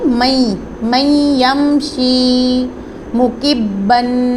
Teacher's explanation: با مشدد ہے اور یہ قلقلہ لیٹر بھی ہے، اس کو ہم نے جماؤ کے ساتھ پڑھنا ہے